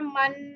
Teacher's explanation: جیسے میم 2 زبر من, آپ فیل کریں گے ناک سے آواز آتی ہے, ناک کی ہڈی سے یہ ادا ہوتا ہے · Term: غنہ